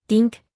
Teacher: suena como un soplido suave entre los dientes